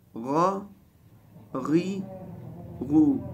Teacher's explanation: غین کی آواز حلق کے اس حصے سے جو منہ کی طرف ہے وہاں سے ادا ہوتی ہے اور یہ موٹا پڑا جاتا ہے